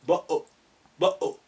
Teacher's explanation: some people in the part of London, when they say bottle, instead of pronouncing the T at the end, they say bo-o, bo-o. They glottal stop. That's what sukun does to hamza.